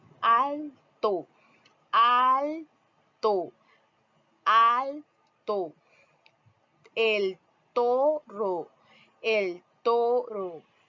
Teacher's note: con el ápice de la lengua contra Los incisivos Superiores